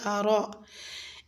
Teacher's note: آیت نمبر 11 میں رأیتا میں آپ نے را کو پر پڑھنا ہے، کیونکہ را پہ زبر ہے تو زبر کی حالت میں را کو پر یعنی کہ موٹا پڑھا جاتا ہے